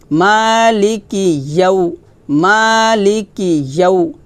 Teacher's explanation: এখানে আমরা টান দিব না, তাহলে হবে মালিকি ইয়াউ, ইয়াউ ইয়া, ইয়া জিব্বার মধ্যখান উপরে তালুতে লাগবে, ইয়া ওয়াও জবর ইয়াউ, ইয়াউ এভাবে জিব্বার মধ্যখানটা উপরে তালুতে লাগিয়ে ইয়াউ উচ্চারণ করবেন।